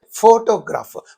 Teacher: So there are three syllables in this. So in this photograph, the first syllable receives the primary stress.